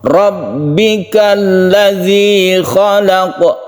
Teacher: Khalaq qalqalah kubra qafnya.